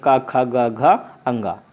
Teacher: जब का को बोलते हैं तो कंठ पे झटका लगता है। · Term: कंठ वर्ण